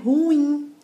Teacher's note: A tonicidade não tá no ru, tá no in. Isso aqui também é um outro erro muito comum.